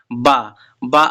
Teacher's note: बा आपका अल्पप्राण घोष व्यंजन है और जो कि ओष्ठ है।